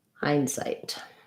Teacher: Hindsight is an example of a compound word where we have compound words typically have first syllable stress, and they also have some secondary stress on the second syllable, which means my hind is going to be a little bit longer than my sight, but my sight is still going to have a clear vowel.